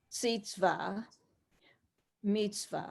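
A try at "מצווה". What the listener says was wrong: See, not seats. See, not seats. See, see.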